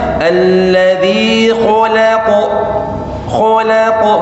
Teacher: waktu nyebut kha sama qaf itu posisi tebal, tapi lamnya jangan ikut tebal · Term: huruf tebal